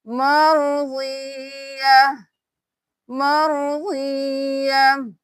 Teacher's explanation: जहाँ पे भी गोल ता आएगी वक्त होगा तो वो ता हा में बदल जाएगी और सिर्फ हा की आवाज आएगी · जब भी ये वाली जो गोल वाली ता है इस पे वक्फ होगा तो ये ता की आवाज नहीं हा में बदल जाएगा ता, तो हम यहाँ पे सिर्फ हा की आवाज निकालेंगे।